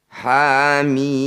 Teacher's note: Dibaca aslinya tapi dipanjangkan 6 harokat. Hamim. Mim ini tepatnya bacaan mad lazim mukhaffaf harfi.